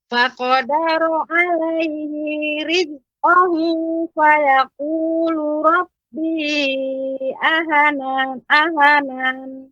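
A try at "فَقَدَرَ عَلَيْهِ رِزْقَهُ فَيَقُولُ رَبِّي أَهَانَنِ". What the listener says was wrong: Ya, hanya 2 harokat Ibu. Ahanan. Silakan Ibu.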